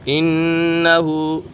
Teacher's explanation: نون مشدد ہے، نون مشدد میں ہمیشہ غنہ ہوتا ہے